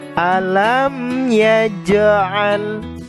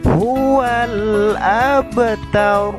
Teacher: huruf qalqalah dipantulkan dengan pantulan kecil atau ringan. Maksudnya adalah qalqalah sugro adalah huruf qalqalah yang berbaris sukun atau mati, tetapi tidak terdapat waqaf pada huruf tersebut.